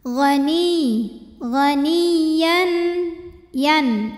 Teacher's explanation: Ya tasydid dibunyikan dengan menggunakan nabar ya. Artinya ada intonasi yang kita naikkan ya. Jadi jangan ditahan karena ini bukan idgham bi gunnah, kecuali kalau huruf sebelumnya tanwin atau nun sukun sebelum ya-nya ya.